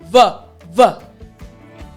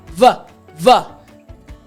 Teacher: put your front teeth on your bottom lip. And you want to make sure that you vibrate. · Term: V sound